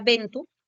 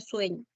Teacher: las vocales E y O breves y tónicas pasaron a ser diptongos. Entonces, por ejemplo, tú tenías la palabra ventu y pasó a ser viento. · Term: diptongación